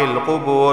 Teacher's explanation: واو ساکن سے پہلے پیش آیا ہے تو اسے بھی ایک الف کے برابر کھینچ کر پڑھا جائے گا